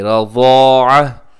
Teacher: रज़ाअत लिखा हुआ है, लेकिन हम क्या करते हैं कि वक़फ़ में ता को साकिन कर देंगे।